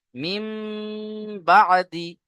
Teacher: তানবিন ও নুন সাকিনের পরে যদি বা আসে, তানবিন ও নুন সাকিনকে হটিয়ে সেই জায়গায় মিম পড়তে হবে একালিফ গুণনা করে। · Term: ইকলাব